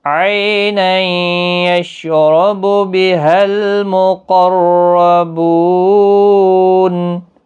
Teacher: را بھی پر پڑا جائے گا زبر کی وجہ سے ، بو واو مدہ ہے، نون ساکن ہوگا وقف کی صورت،